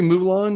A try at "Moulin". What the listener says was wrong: The N is silent, by the way. Moulin.